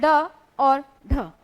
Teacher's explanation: जिनके उच्चारण में जीभ पहले ऊपर उठकर मूर्धा को छूती है और फिर और फिर झटके से नीचे आती है। उसको उत्क्षिप्त व्यंजन कहते हैं।